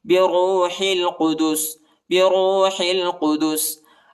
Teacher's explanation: راو پیش رو، ہا کو جو ہے لام کے ساتھ ملائیں گے، ہا لام زیر حل، الف نہیں پڑھا جاتا، الف کے اوپر حرکت نہیں ہے